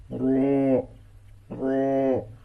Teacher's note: जुबान की पुश्त और उसका किनारा जब सनाया के मसूड़ों से मिले तो रॉ अदा होती है और रॉ को पूर पढ़ा जाता है।